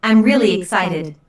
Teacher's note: Notice the emphasis on really. Really is used to emphasize the adjective excited here.